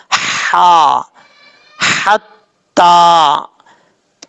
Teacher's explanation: لوگ غلطی کرتے ہیں، حتیٰ پڑھ جاتے ہیں، حتیٰ نہیں پڑھنا، ہا بھاری ساؤنڈ کے ساتھ نہیں پڑھا جائے گا، بریک ہا پڑھا جائے گا